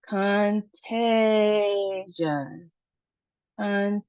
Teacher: three syllables, emphasis on our second syllable, and then we see there's a long sound for the A.